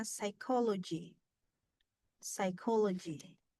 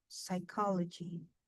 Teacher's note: Yang strong, stresnya adalah silabel kedua.